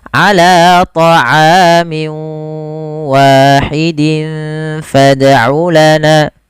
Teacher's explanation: masukkan tanwinnya ke huruf waw, kemudian dirubah suaranya menjadi huruf waw. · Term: idgham bi gunnah